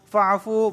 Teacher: واو ساکن سے پہلے پیش آیا ہے تو ایک الف کے برابر کھینچ رہا ہوں